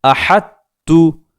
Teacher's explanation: جیسے یہاں ہم دیکھیں احدتو، ہم نے ہا کو ڈائریکٹ تا میں ملا دیا، ہا تا زبر حت تا پیش تو، احدتو، طا کو یہاں نہیں پڑھا گیا.